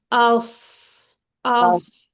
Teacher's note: सौद बोलेंगे ना तो उसके अंदर टिप थोड़ी पीछे चली जाती है